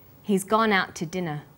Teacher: have a look at this sentence he's gone out to dinner we stress he gone out and dinner the two is unstressed when we link out which is stressed · We stress he's, gone, out, and dinner. The two is unstressed. When we link out, which is stressed, and to, which is unstressed, the final t sound in out is held slightly longer.